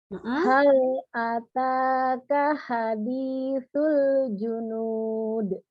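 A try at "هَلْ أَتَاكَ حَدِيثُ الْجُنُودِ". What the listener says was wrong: Ini haknya bagus. Hanya harus lebih gema lagi coba. Hal enggak jangan dorong dari dada. Hal ataka jangan dorong dari dada, jangan. Ya, jadi ada bedanya agak besar sebenarnya ha sama ha. Jadi tadi tuh masih kayak H Indonesia banget.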